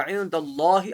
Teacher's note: اللہ کے لام سے پہلے زبر ہے، موٹا پڑھا جائے گا.